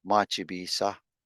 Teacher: If we're just going to say something is starting, we would say mach se, but we already have bisa in there. So we just cut out the se sound in machi, and we just go machi bisa.